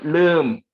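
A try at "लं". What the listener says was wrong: Yeah, you are saying oo at the end. So try to fix it, right?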